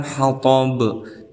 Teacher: ada qalqalah kubra karena ada salah satu huruf qalqalah yaitu ba di akhir kalimat ataupun diwaqafkan